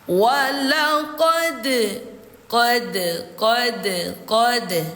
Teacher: Jadi cara membaca huruf dal sukun ini harus dipantulkan. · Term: qolqala sugra